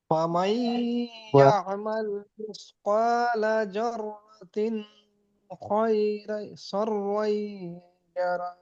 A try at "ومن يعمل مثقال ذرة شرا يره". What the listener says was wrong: এখানে ইকফা হয়নি তো, ইকফা করতে হবে।